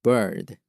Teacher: 구분이 안 되는데 발음기로는 분명히 다르죠. 그래서 R에서는 R과 합해져서 장음처럼 강하게 다소 내리꽂는 듯하게 발음합니다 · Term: 강한 어 발음